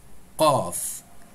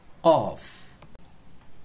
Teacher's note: lettre qaf, c'est un son épais et arrondi.